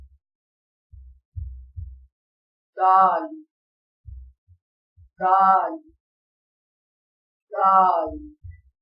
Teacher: جب زبان کی نوک اوپر کے اگلے دو دانتوں کی جڑ سے لگے تو دال ادا ہوتا ہے، جیسے کہ تصویر میں واضح کیا گیا ہے۔